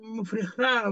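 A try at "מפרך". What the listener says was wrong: Ну, не от слова «фреха», «мафреха». Не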